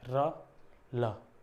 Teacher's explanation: जो लुंठित है और पार्श्विक है इसमें जीभ का मूवमेंट है